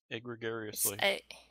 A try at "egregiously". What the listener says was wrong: Egregiously? You're putting an extra syllable in how I would say it.